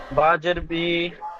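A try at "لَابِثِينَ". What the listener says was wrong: বাজের বি টান হবে না বা জের বি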